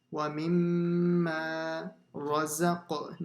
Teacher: See how it does an echo sound on the qa.